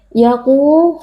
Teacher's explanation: huruf qaf, huruf tebal, angkat pangkal lidah.